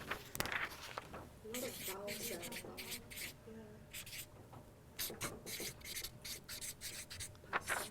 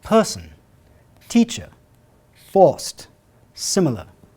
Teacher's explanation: What was going on with the words person, teacher, forced, and similar? The r is not pronounced.